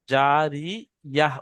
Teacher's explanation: এখানে তা দু পেশ তুন হওয়ার দরকার ছিল, কিন্তু এখানে আয়াত করার জন্য, অর্থাৎ এখানে থামার জন্য, এই গোল তাটা হায় সাকিন হয়ে যাবে। আর গিয়ে, আর ইয়া আর হায় সাকিন যেমন হয় সেই রকম উচ্চারণ হবে।